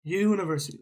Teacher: when you say the word university, okay, you're saying it almost with a Y sound